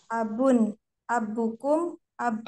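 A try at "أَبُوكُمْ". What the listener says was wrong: Abu, panjang kan? Ada tambah waw.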